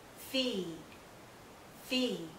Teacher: here we have the e sound and it's not followed by any consonant sound so it's nice and long